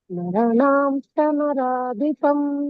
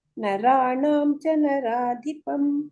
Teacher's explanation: ನರಾಣಂ ರ ದೀರ್ಘ ಇದೆ